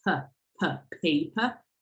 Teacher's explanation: the first per in this case is aspirated like per, paper, and the second is not